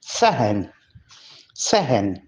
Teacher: सहन में स्वाद के ऊपर जबर हम पढ़ेंगे, इसको सेहन नहीं पढ़ेंगे